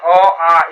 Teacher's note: स्वर वर्णों का उच्चारण स्थान अ, आ का कंठ होता है। जैसे बोलकर हम लोग देखते हैं अ, आ, इसका उच्चारण स्थान कंठ है।